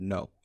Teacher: you'll notice that you don't make just an o sound but you add a little ooh sound onto the end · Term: gliding vowels